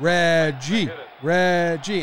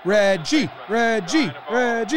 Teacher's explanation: So nowadays we put the emphasis on the second syllable. They were putting the emphasis on the first syllable.